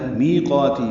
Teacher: می یا مدہ، قا الف مدہ، دونوں کو 2 حرکات لمبا کریں گے